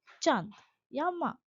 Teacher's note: अनुनासिक इसे चंद्रबिंदु कहते हैं। इसके उच्चारण में हवा नाक और मुंह दोनों से निकलती है।